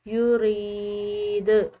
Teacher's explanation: دال حروف قلقلہ میں سے ہے تو اس کو ہلاتے ہوئے چھوڑیں گے